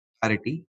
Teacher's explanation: And its pronunciation, they stress on par syllable